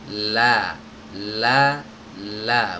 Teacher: huruf lam itu keluarnya bukan dari ujung lidah ini tapi pinggiran lidah menyertakan bagian ujung lidah jadi di bagian lidahnya ini yang menempel ke gusi ini lebih